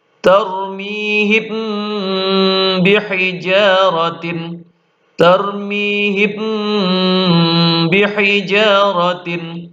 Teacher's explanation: Terakhir di sini ikhfa syafawi, yaitu ketika mim sukun bertemu huruf ba dibaca dengung yang lama